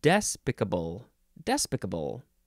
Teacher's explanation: you can emphasize the first syllable